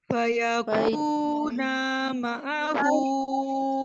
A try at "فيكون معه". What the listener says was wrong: ना को आपने स्ट्रेच नहीं करना है, इसको हम जल्दी पढ़ेंगे। फयकून माअहू